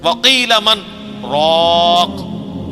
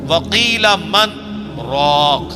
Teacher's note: سکتا ہے ایک ہی سانس میں پڑھنا ہے لیکن تھوڑا سا وقفہ کر کے، ورنہ اگر یہ ڈائریکٹ پڑھا جاتا تو مر راک بنتا، چونکہ نون جو ہے وہ، یہ نون غنہ یا جو تنوین ہے وہ اس کے بعد اگر 6 حروف میں سے کوئی حرف آ جائے، یا، را، میم، لام، واو، نون، تو ادغام ہو جاتا ہے۔